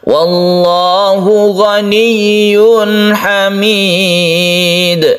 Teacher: Arid artinya menghadapi, lisukun menghadapi huruf yang disukun, yaitu dalam hal ini dal ini ya. Kemudian dal ini dikolkolakan karena akhir ayat atau akhir waqaf, maka dia itu menjadi qalqalah kubra